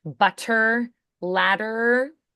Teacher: Butter, hmm ladder, It's not a full stop like um butter, butter, yeah, it's a it's a quick tap, but it's not a full stop. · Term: flaps